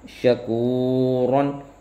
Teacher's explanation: واو ساکن سے پہلے پیش واو مدہ ہوگا، ایک الف یعنی 2 حرکات کے برابر اس کو کھینچ کے پڑھیں گے ، لمبا کر کے پڑھیں گے۔ اور ہی اس میں یا